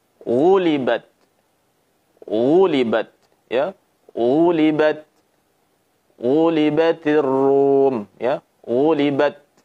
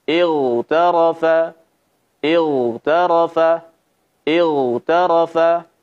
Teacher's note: pangkal lidah naik, suara naik sehingga suaranya tafkhim